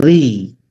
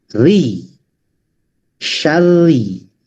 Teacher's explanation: setiap ro tasdid berharkat kasroh maka dibaca tarkik atau tipis gitu